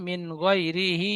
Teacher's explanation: খাড়া জের ইয়া মাদ্দার সমতুল্য সুতরাং ইয়া মাদ্দার মত এক আলিফ পরিমাণ টান দিয়ে পড়ব